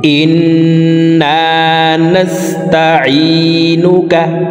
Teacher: ইন এখানে ওয়াজিব গুন্না, হরকতের বামে নুনের উপরে তাসদিদ আছে, এই কারণে এই হামজাটি তাসদিদওয়ালা নুনের সাথে 3 সেকেন্ড পরিমাণ গুন্নাহ করে ধরে রেখে পড়ব